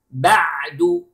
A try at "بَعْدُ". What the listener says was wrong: Notice to the عَيْن letter. Okay. It is عَيْن, it is not Hamza.